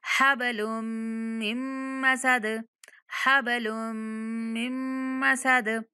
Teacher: جب میم کو میم کے ساتھ ملائیں گے تب بھی غنہ کے ساتھ ادا کریں گے، یعنی اس نون کی آواز جو ہے وہ غنہ کی صورت میں آئے گی.